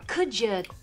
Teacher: When a D is followed by a y sound, it often becomes like a j.